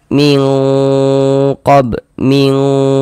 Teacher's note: Jadi di bagian mingnya itu suaranya itu kita tahan, kita panjangkan sejenak ya. Nah, sepanjang dua harakat. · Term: ikhfa hakiki